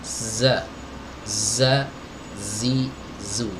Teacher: desis pada huruf Zaini nya harus dibaca dengan kuat dan tajam ya Za Za Za di bukan sekedar desis bukan Za Zhi juga